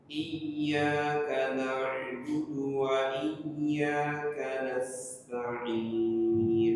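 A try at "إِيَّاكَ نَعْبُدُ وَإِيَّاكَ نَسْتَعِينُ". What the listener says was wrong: Nah, lebih dibuka lagi mulutnya. Masuk ke hidung soalnya suaranya sedikit masuk mendengung. Jadi pengaruh juga kalau kita membukanya irit-irit.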